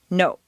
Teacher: in Spanish or Japanese, the word no is, to our ear, clipped or abbreviated. No. And in Standard American, no.